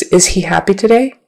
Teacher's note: You almost don't hear the H too much in American English.